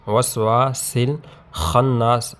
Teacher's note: وا الف سے پہلے زبر ہے تو یہاں پر اس کو ہم ایک حرکت تک لمبا کر کے پڑھیں گے، حروف مدہ میں سے الف مدہ ہے۔